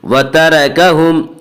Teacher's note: اس کا قاعدہ یہ ہے کہ را کے اوپر زبر اور پیش آئے تو را کو پر پڑھیں گے، اور را کے نیچے زیر آئے تو را کو باریک پڑھیں گے۔ یہاں را کے اوپر زبر ہے اس لیے را کو پر پڑھیں گے